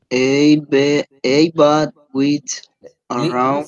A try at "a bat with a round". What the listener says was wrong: Listen, when you read the A, you don't have to pronounce, o sea, no puedes hacer que sea una E completamente. Recuerda que esa A es una A tirando a E, pero no es una E completa. Es a bat with a round or oval frame.